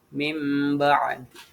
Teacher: nun atau tanwinnya diganti ke mim gitu. Jadi mim ba'di kan asalnya min ba'di ya. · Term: iklab